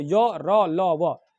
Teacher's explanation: ऐसे व्यंजन वर्ण जिसको बोलते समय किसी भी चीज की रुकावट नहीं होती, एकदम फ्लो में बोल देते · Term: अंतष्ट व्यंजन